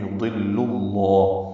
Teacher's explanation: یضلو کا لام باریک ہے اور لفظ اللہ کا لام پر ہے اور یہ 2 حرکات لمبا ہے۔